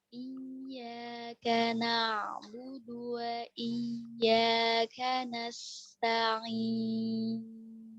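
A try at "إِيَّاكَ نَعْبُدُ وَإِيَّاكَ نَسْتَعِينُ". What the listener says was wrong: Perpindahan ta ke ainnya kurang lincah Ustazah. Tadi kayak kesini sedikit. Coba ulang.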